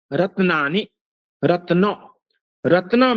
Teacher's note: रत्न में द्वितीय तकार यम है